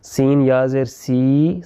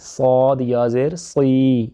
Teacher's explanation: وہ فرق کس چیز کا ہے کہ سین باریک ہے اور صاد موٹا ہے، یعنی کہ اس کو ہم تھک کریں گے، زبان کی جڑ کو اٹھائیں گے اس میں اور سین میں نہیں اٹھائیں گے